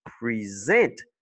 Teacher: Mais quand c'est un verbe, tu dis present. La deuxième syllabe est accentuée et la première, c'est P-R-E.